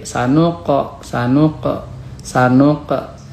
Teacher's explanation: Selanjutnya untuk tajwidnya, sanuqa, ini qalqalah sugro. Huruf qaf itu huruf qalqalah, dibacanya memantul, tapi patulnya sedikit.